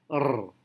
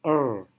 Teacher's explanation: dalam bahasa Inggris, lidah tidak bergetar sekuat dalam bahasa Indonesia